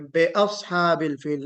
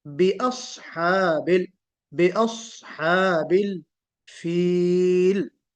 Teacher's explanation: با مکسورہ ہے، اس کو ہم مجہول نہیں پڑھیں گے